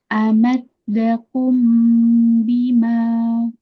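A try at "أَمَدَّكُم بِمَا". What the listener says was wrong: Ya, kafnya lebih dikasih hamas sedikit, jangan dakum.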